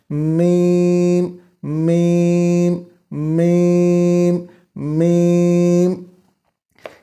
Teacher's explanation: میم کی ادائیگی میں آواز ناک میں پھیل جاتی ہے۔ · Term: گنہ